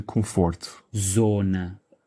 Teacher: it's a nasal sound, as if it were an M in Portuguese